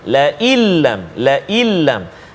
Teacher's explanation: Nun mati ataupun nun sakinah, nun mati bertemu dengan lam, la illam, la illam. Jadi dia tak dengung kat situ, nama dia idgham bila ghunnah. Masukkan bunyi nun ke dalam lam tanpa dengung.